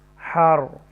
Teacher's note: را کو تفخیم کے ساتھ پڑھیں گے کیونکہ اس سے پہلے زبر ہے